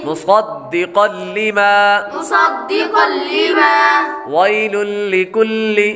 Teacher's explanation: میم کے بعد صاد حروف مستعلیہ میں سے ہے، اس لیے صاد کو پر یعنی موٹا پڑھیں گے.